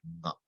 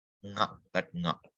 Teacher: Just, when you take the consonant class, ka, kha, ga, gha, the next letter, the nasal, is nga. So you say ka, drop the vowel a, it gets stuck, and in that ka, you add now a nasal sound. That's when you will get nga, like in Ganga.